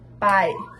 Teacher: a palavra pai é um ditongo, porque a vogal e a semivogal ficam juntas